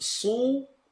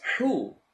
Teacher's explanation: Do you notice sad is heavy, ha is light? Even though both of them have an u sound, both of them have an u.